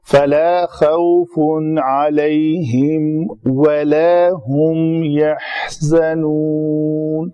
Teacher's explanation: یہاں پہ تنوین کا اظہار ہوگا، خوف علیہم نہیں کریں گے کیونکہ حروف ہلکی آ رہے ہیں بعد میں.